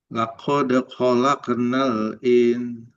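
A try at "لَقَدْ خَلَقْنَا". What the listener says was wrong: Jangan jangan keluar udara kofnya lako laqad khalaqo khalaqonal khalaqo kofnya pantul kan khalaqona khalaqona yang lako bukan lako gitu lako lako لقد Yang qaf yang pertama masih kurang. Khalaqona, khalaqona.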